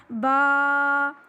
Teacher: با یہ دونوں ہونٹوں کے ملانے سے ہوتا ہے، لیکن دونوں ہونٹوں کو اس طرح آپ نے نہیں ملانا ہے۔